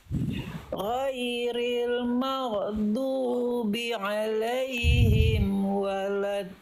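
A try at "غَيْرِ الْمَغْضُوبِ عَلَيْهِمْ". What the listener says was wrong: Ghairil maghdu, huruf ghain sukun gak boleh mantul. Ghain sukun punya sifat namanya rokhwah Bunda. Rokhwah itu artinya mengalir dia suaranya. Ghairil maghdu, ngalir suaranya konsonan bukan ge. Ghairil maghdubi, ikuti. Ghain dilafalkan dari tenggorokan paling atas, dialirkan suaranya. Dialirkan, rasakan dari sini. Ghairil maghdubi.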